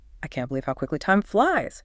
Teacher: Okay, the challenge there is definitely not stressing I or can't too much. The energy has to go on to believe, quickly, and flies. Those feel like the peaks.